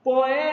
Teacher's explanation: Pessoal, uma palavra paroxítona, a sílaba tônica dela é a penúltima. E a proparoxítona, a antepenúltima sílaba é mais forte, como em poético.